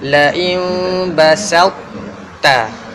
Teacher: kita takkan baca dengan qalqala pada ta